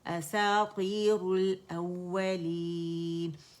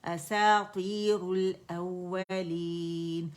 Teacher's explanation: اساطیر را ضم رو موٹی ہوگی